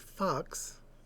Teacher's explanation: the short ah, as in the word fox, where you say it quickly